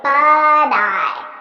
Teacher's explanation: I'm saying but I. So I'm transferring the T sound onto the next word. Now you'll notice I'm saying it as a soft D because that's American pronunciation.